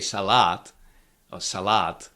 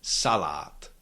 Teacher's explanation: You have to keep the stress on the first syllable